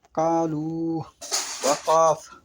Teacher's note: বড় কাফ বর্ণটি জিহ্বার মূল ও ওই বরাবর উপরের তালু হতে কাকের আওয়াজের ন্যায় উচ্চারিত হয়।